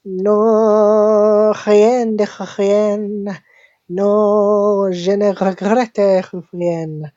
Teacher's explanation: She has all the dry R's going on and on and on, and that's what really gives it the French sound.